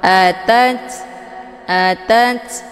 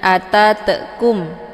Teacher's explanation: samar-samar at atat jadi jangan atatum itu bacaan yang salah melainkan dialirkan dengan desis angin yang agak samar-samar